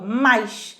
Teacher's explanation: O A se destaca em relação ao I, ó, mais. Se o A se destaca em relação ao I, ele é vogal e o I é semivogal. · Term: ditongo decrescente